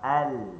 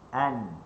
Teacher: Lam dekat depan, nun kat belakang sikit. Okey. Cuma cara sentuh sama.